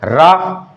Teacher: आवाज निकलती है जो, वो कैसी होती है, कंपन, कंपन से निकलती है। ठीक है, इसीलिए इसे क्या कहा जाता है, प्रकंपित भी कहा जाता है।